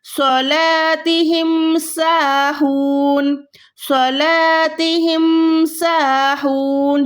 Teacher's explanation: صاد موٹا حروف ہے, اس میں ہم منہ کو گولائی کر رہے ہیں اور سین پہ ہم گولائی نہیں کر رہے